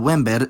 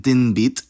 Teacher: if /n/ is ungeminated and before an obstruent, it'll match the place of that obstruent. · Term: place assimilation